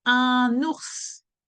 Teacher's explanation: for once we are pronouncing the S at the end of the word. Something that we scarcely do in French when we have a consonant at the end of the word.